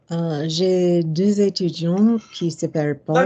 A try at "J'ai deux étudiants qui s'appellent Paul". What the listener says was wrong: Strictly speaking, you finished étudiant before we went to key. Étudiant qui consonant join, right?